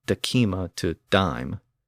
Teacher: the K sound in the middle of the word decima eventually fell away, and the word went from decima to dime.